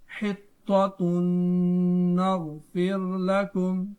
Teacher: یہاں تنوین کے بعد نون ہے تو ادغام مع الغنہ ہوگا، کیونکہ نون حروف یرملون میں شامل ہوتا ہے